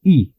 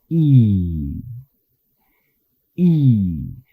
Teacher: La diferencia es que este sonido I es más largo y se hace una sonrisa fuerte cuando se pronuncia. Para hacer este sonido, separa los labios como para hacer una I, luego retrae los labios como en sonrisa fuerte y pronunciamos una I larga.